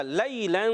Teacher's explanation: یا ساکن سے پہلے زبر آ گیا، یا لین ہو گیا، نرمی سے ادا کریں گے